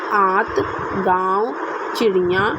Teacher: अनुनासिक के उच्चारण में नाक से बहुत कम सांस निकलती है और मुख से अधिक। अनुस्वार में क्या होता था, नाक से अधिक सांस निकलती थी, मुख से कम निकलती थी, लेकिन इसमें कम सांस निकलती है नाक से और मुख से अधिक निकलती है।